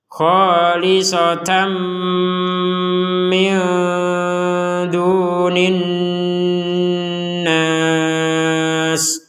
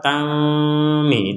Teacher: Jadi tanwin ini dimasukkan kepada huruf mim sehingga kita tidak lagi membacanya dengan jelas. Kalau dibaca jelas akan menjadi khalisatan mi. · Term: tanwin bertemu dengan mim